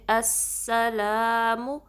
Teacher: ادھر بھی حمزہ وصل کو سین سے ملانا ہے، سین کی سیٹی واضح کرنی ہے، تھوڑا سا ٹائم دینا ہے سین پہ کیونکہ تشدید ہے، تو اس طریقے سے ہم پڑھیں گے السلام. لام کو 2 کاؤنٹ اسٹریچ کرنا ہے، الف مدہ ہے بعد میں. منہ کو بالکل اسٹریچ نہیں کرنا، یعنی کہ منہ اتنا نہیں بلکہ جسٹ 1 کاؤنٹ منہ، اوکے.